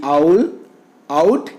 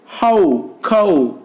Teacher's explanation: the glide for this diphthong begins between the front and back open positions and proceeds in the direction of U that we already discussed.